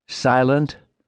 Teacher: a long I trailed by a soft final T